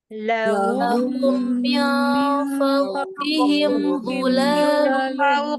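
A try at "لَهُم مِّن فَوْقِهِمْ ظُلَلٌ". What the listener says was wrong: Nggak boleh panjang. Lanya nggak panjang, Bapak. Zulalum. Nggak boleh ya. Zulalum. Dia pendek.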